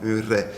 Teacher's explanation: Alors, au 17e siècle, vous le savez sans doute, le R se prononçait un R dental, un R, avec le bout de la langue. Alors, comme un L, mais on fait vibrer la langue